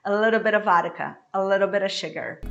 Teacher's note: this A in the beginning is very brief. It's very fast.